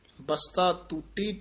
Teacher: ਕਈ ਵਾਰ ਟੂਟੀ ਬੋਲ ਜਾਂਦੇ ਆਂ ਦੋਵੇਂ ਟੈਂਕੇ ਬੋਲ ਜਾਂਦੇ ਆਂ ਪਹਿਲਾਂ ਤੱਤਾ ਹੈ